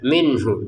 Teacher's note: nun sukun bertemu ha kita baca dengan jelas ya.